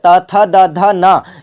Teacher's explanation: जीभ जो है आपके दांतों को छूता है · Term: त वर्ग